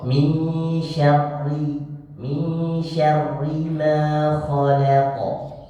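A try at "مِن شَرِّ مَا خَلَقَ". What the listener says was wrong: Khalaq. Hati-hati, la tipis, jangan khalaq. Khalaq.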